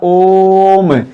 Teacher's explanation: ओम इस प्रकार से, ओ दीर्घ स्वर है, लेकिन ओ को बोलते समय जिसे बोला गया ओम, इस प्रकार ओ को बोलने में हमें 2 मात्रा से ज्यादा समय लेना पड़ा, इसीलिए यहां ये प्लुत का चिन्ह बना दिया जाएगा। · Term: प्लुत स्वर